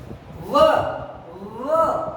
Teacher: दंतोष्ठ्य, दांत और होठ दोनों से दंतोष्ठ्य, व दांत और होठ दोनों से बोला जाता है